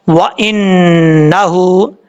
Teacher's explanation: اس کے بعد ہے واو زبر وا، حمزہ زیر نون، ان، نون زبر نا، ہا الٹا پیش ہو، وَإِنَّهُ، نون کے اوپر زبر ہے اور شد ہے، نون کے اوپر جب بھی شد ہوگا تو غنہ ہوگا ایک الف کی مقدار۔ ہا کے اوپر الٹا پیش ہے، ایک الف کی مقدار، اس کو لمبا کر کے پڑھیں گے